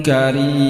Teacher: Karim ini mad arid lisukun. Jadi kita baca 4 ketukan.